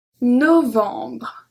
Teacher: I don't pronounce the E at the end.